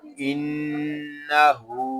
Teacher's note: نون زبر نا، ان، ہا الٹا پیش ہو، انہو، ہا کو ہم ایک الف تک کھینچ کر پڑھیں گے کیونکہ یہاں پہ الٹا پیش ہے